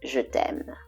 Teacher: the last syllable has a lower pitch